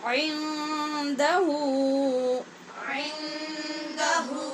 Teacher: یہاں نون پر اخفاء حقیقی ہے کیونکہ دال نون کے بعد حروف اخفاء میں سے ہے